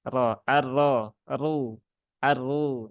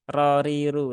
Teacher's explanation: kalau dia itu ro tafkim maka pangkal lidahnya dinaikkan ke atas